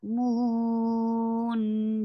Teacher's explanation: It will be four counts long because you are giving temporary sukoon at the end. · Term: mudarid li sukoon